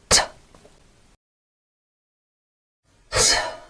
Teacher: And then unvoiced t, made by blocking the airflow by touching the alveolar ridge with the top of the tongue. Sorry, with the tip of the tongue, and then releasing the air through the mouth like this.